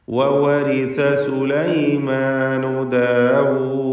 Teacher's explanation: ദാലിൽ വഖഫ് ചെയ്യുകയാണ്, സുക്കൂൻ വരുന്നു, ഖൽഖല കുബ്ര നൽകേണ്ടതുമാണ്. ഇനി വഖഫ് ചെയ്യാതെ ഓതുമ്പോൾ അങ്ങനെ ദീർഘം വരാതെ 2 ഹറക്കത്തിൻ്റെ അളവിലുള്ള സാമാന്യ ദീർഘം മാത്രം നൽകിക്കൊണ്ട് വവരിസ സുലൈമാനു ദാവൂദ വഖാൽ എന്ന് ഓതേണ്ടതാണ്.